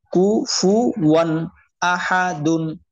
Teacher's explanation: উক্ত নুনে সাকিন অথবা তানবিনকে গুণনা ছাড়া স্পষ্ট করিয়া পড়িতে হয়। অর্থাৎ যেমন আছে তেমনই পড়তে হবে আর কি। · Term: ইজহার